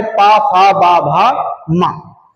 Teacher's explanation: ओष्ठ के अंतर्गत उच्चारित होने वाला जो वर्ग है वो वर्ग है पा वर्ग